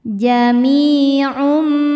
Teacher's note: Mi hukumnya mad tabi'i dhahiri karena ada ya sukun sebelumnya kasrah. Cara bacanya panjang 2 harokat.